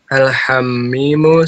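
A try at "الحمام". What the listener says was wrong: Oke, Al-Hammam. Kan ada alif lamnya ya, ada alifnya ya. Jadi kan bahasanya ma, nggak mungkin mi. Al-Hammamu dan Al-Mirhabu.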